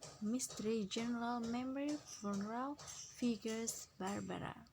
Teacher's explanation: we often delete the unstressed vowel that are shown in bold type in words like the following: mystery, general, memory, funeral, figures, Barbara.